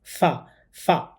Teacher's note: গোল মাথার উপরে যেখানে একটি নোক্তা বা ফোঁটা থাকবে সেটার নাম হচ্ছে ফা। এই হরফটা উচ্চারণ করার সময় উপরের দাঁত নিচের ঠোঁটের সাথে লাগিয়ে উচ্চারণ করতে হবে।